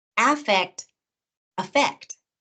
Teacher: often in conversation, the first vowel in those two words gets reduced to a schwa, to that lazy sound. What's different, however, is the syllable stress.